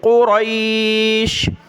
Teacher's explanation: قاف اور را دونوں کلرفل ہیں، دونوں کو موٹا پڑھنا ہے۔